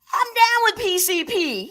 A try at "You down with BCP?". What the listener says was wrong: Wait, first off, it's not PCP, and you said it wrong. You gotta say, you down with BCP with a B? You down with BCP?